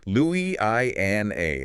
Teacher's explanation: 5 syllables. The stress comes late on the 4th syllable. Louisiana. That strong French history really gives this name its specific melodic quality.